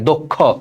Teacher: যুক্ত খ থাকলে আদ্য অটা ওকারের মতো হয়, দক্ষ। আর এই দেখো দক্ষ, এখানে শ্বাস ছেড়ে দিচ্ছি, হসন্ত হবে, দক্ষ, ঠিক আছে।